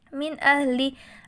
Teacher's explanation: ada nun sukun bertemu dengan Hamzah dan dibaca jelas tanpa mendengung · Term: bacaan izhar